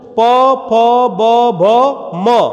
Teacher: दोनों होठ स्वतः ही आपस में स्पर्श कर जा रहे हैं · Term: ओष्ठ